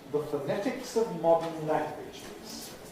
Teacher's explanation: Weak vowels, schwas, ə, in the first two syllables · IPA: ðə fəˈnetɪks əv ˈmɒdn̩ ˎ_læŋ_gwɪʤɪz